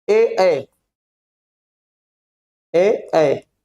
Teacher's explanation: कंठ तालु यानी जो कंठ और तालु से मिलके बना हो।